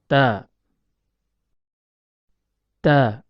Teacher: Huruf ta keluar dari tempat pertemuan antara ujung lidah dengan pangkal gigi seri atas. Ta, ta. Makhraj huruf ta terletak pada pertemuan antara ujung lidah dengan ujung gigi seri atas.